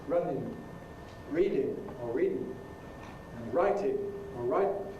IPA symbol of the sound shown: n